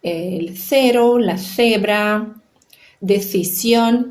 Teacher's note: que na Espanha se pronuncia com um som que a gente chama de interdental, que é esse som de C.